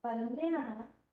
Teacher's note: We might see leal stress error. So if it's banana with a stress in the middle, banana, we might see a reversal of that stress pattern.